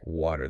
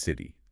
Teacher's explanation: That T flaps, it becomes a quick do sound. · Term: flapped T